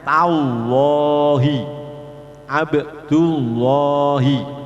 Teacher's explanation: Ketika dibaca sebelumnya dibaca fathah atau dhammah, lamnya menjadi tafkhim, bacaannya tallahi, abdullahi.